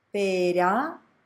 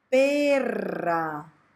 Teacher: Pera without vibration, perra with vibration.